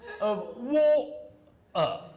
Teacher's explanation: And what they're doing is they're making glottal stops